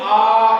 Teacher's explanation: आ बोलने पर मुंह सबसे ज्यादा खुलता है और विवृत का अर्थ है खुला हुआ